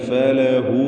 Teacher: ഫലഹു എന്നതിലെ ഹാ ദ്വമീർ മദ്ദുസ്സിലത്തി സുഗ്റ എന്ന ദീർഘം നൽകി. 2 ഹറക്കത്തിൻ്റെ അളവിൽ മാത്രം അവിടെയും ദീർഘിപ്പിക്കണം. വഖഫ് ചെയ്യുകയാണെങ്കിൽ ആ ദീർഘം ഉണ്ടാവുകയില്ല.